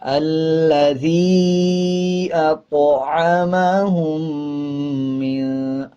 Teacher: جب طا کے اوپر جزم آ جائے تو قلقلہ کرتے ہیں اور طا موٹے حروفوں میں سے آتا ہے